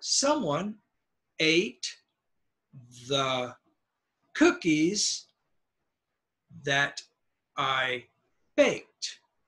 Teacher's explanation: for your nouns they're gonna be very high ate is gonna be a little high the word that will be low and that I will be